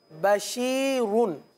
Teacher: बस दो पेश की जो तनवीन है या पेश, इसमें होंठ गोल होते हैं